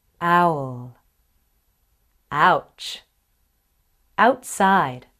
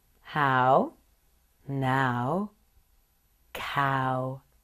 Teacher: the lips move from relaxed with the first vowel ah to rounded with the second vowel here's the ow sound in the beginning of some words owl